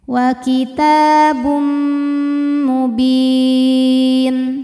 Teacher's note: Lalu berikutnya ada hukum idgham bi gunnah karena ada tanwin dhammah menghadapi huruf mim, maka tanwinnya masuk ke mim. Kitabum bunyi m dan tahan dengungkan.